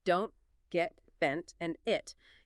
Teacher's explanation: Many final T sounds in American English, especially at the end of a word or thought group, are stopped. This means your tongue goes up to the roof of your mouth, right behind your teeth, as if to make the T sound. But you don't release any air. It's almost like you're preparing for the tea, but then just holding it there, cutting off the sound abruptly. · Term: stopped T's